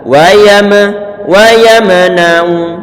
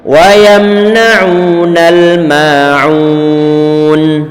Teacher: Huruf mem dia bukan termasuk huruf qalqalah, sehingga jangan diqalqalahkan, jangan dipantulkan.